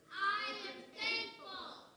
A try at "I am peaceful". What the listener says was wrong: You can say it a little quieter, hon. I am peaceful.